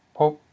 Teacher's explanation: a low consonant plus a short vowel o, ending in a dead syllable p, which equals mid-tone. So this word is pronounced as pop.